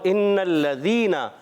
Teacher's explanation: ذال کا مخرج زبان کا سرا اوپر کے دانتوں کے اندرونی کنارے, تا ذال وا, حروف لثویہ یاد رکھنا ہے.